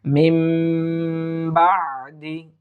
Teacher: এখন নুন সাকিন বা তানবিনকে যদি বা এসে যায়, তাহলে নুন সাকিন অথবা তানবিনকে ছোট্ট একটি মিম দ্বারা পরিবর্তন করিয়া গুন্নাহ করিয়া পড়িতে হয়। ইহাকে ইকলাব বলে।